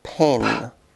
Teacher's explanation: the bottom lip and top lip are brought together bilabial means using two lips as in the first sound of pen